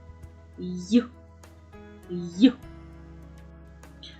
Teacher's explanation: Він завжди М'який приголосний і вимовляється швидко